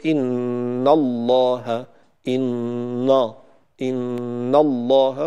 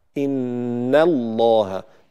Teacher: إن الله اصطفى، إن النون مرققة دائما، وهنا النون مفتوحة فجاء بعدها لفظ الجلالة مفخم، فالبعض يفخم الحرف الذي قبل لفظ الجلالة إذا فخم لفظ الجلالة، فيقول إن الله، إن الله، وهذا خطأ، إن الله، بهذا الشكل نرقق النون ونفخم لام لفظ الجلالة